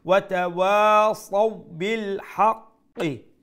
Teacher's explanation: তো আমরা এটার সুরটা নরম রাখবো এবং তাড়াতাড়ি ওয়াতাওয়াসাউ বিল হাক্কি qaf shadda double letter double sound and pronounce the qaf with the full sound